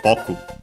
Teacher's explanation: Boku is accented on the first syllable, so high, low